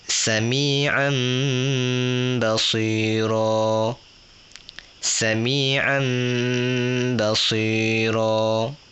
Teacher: Bacaan A tu akan jadi am terus. Masuk ke menjadi mim. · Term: iklab